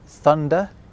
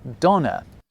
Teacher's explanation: where English developed a th sound in certain words, German went off in a slightly different direction and ended up with a d sound instead